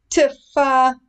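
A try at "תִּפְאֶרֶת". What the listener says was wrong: The 2 dots underneath the letter, sort of in the middle of a word. It's the end of a syllable. So it would be Teef. Teef Eret.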